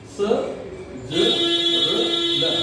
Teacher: चार जो वर्ण हैं ये एक ही तरीके से बोले जाते हैं, दंत मूल से बोले जाते हैं, स, ज, र और ल।